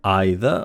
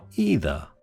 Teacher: Note that either can be pronounced as either either / ˈaɪ.ðə / or either / ˈiː.ðə /.